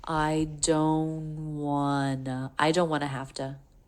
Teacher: I think she does a really small stop T, but you could get away with dropping it and just going with the energy forward to the N right into the W.